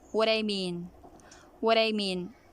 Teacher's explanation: you are connecting them and you are saying them with one breath with one take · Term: connected speech